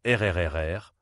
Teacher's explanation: Le R est un son guttural, produit au fond de la gorge. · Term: R français